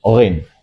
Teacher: ghin itu pastikan keluar dari ujung tenggorokan dan tebal